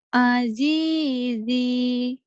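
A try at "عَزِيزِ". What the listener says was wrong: Z-nya pendek yang satu. Azizi.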